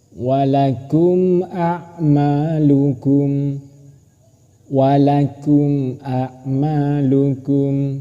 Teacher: Tilka ummatun qad khalat laha ma kasabat walakum ma kasabtum wala tus'aluna amma kanu ya'malun. Ada mim mati bertemu dengan hamzah, maka ini disebut idhar safawi. Cara membacanya harus jelas.